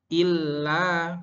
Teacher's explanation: illa ada lam tasydid harus ditekan membacanya